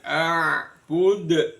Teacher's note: a'bud, dalnya dibaca qalqala kubro